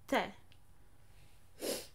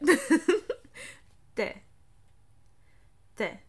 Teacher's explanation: This is soft T, softening it by adding contact with my tongue at the back of my teeth, the back of my front teeth. T.